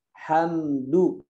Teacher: Cepat sukunnya itu jangan difokuskan di bibirnya saja ya, tapi dimasukkan sedikit ke hidung sini. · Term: gunnah